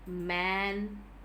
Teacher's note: the two lips are in complete contact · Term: bilabial nasal